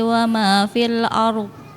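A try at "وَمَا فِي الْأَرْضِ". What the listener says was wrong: Ard ya. Dotnya gak kedengar. Ulang.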